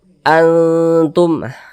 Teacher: samarnya ya kadar ikhfanya itu dia tinggi sehingga kita baca Antum dia itu seperti lebih condong ke n tapi dia disamarkan jangan dibaca angtum jangan dibaca Ang jadi dibaca an Antum kita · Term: ikhfa Hakiki aqrab